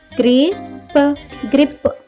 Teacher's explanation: వీటి మధ్య ఎలాంటి ఓవెల్ లేదు కాబట్టి జిఆర్ యొక్క శబ్దం ఘర్ కాకుండా గ్ర అవుతుంది